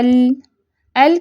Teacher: ال کی ادائیگی میں آواز زبان کی نوک سے زبان کے کناروں کی طرف پھر جاتی ہے، انحراف جو ہے کناروں کی طرف ہوگا، گویا لام کی آواز کا انحراف جو ہے زبان کی نوک سے اس کے دونوں کناروں کی طرف ہوتا ہے، یہ آپ پک میں دیکھ رہی ہیں۔